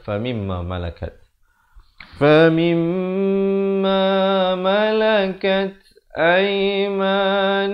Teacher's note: Di sini idgham mislain saghir. Mim mati bertemu mim, dengungkan dua harakat.